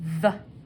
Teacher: We have a hard TH here, making that voice sound.